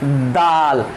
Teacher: दाल को हम deeply tight करते हैं, किससे, दांत से टच करते हैं